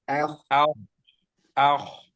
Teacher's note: tebalnya bukan dimulai dari a, tapi kho-nya aja. A tetap tipis. Ah. أخ أخ Ya.